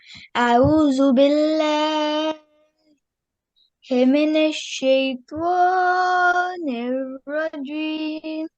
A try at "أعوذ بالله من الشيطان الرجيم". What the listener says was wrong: Make sure, again, we've got vowel mud here, so we need to extend that a little bit. أعوذ بالله من الشيطان الرجيم.